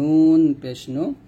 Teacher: নুন জিহ্বার আগার তার বরাবর উপাতলের সঙ্গে লাগবে